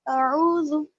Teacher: اس کے بعد ہے عین واو پیش، یہاں پر واو مد ہے، اور واو مدیہ میں ہم پڑھ چکے تھے کہ ہم اس کو ایک الف کے برابر کھینچ کر پڑھیں گے. واو جس پر جزم ہے اور اس سے پہلے پیش ہے، تو ہم اس کو ایک الف کے برابر کھینچ کر پڑھیں گے. جلدی نہیں پڑھنا، یہاں پر حمزہ کو جلدی پڑھیں گے اور اعوذ کو تھوڑی سی دیر لگائیں گے وہاں پر.